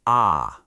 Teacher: Your tongue just dropped way down and pulled all the way back.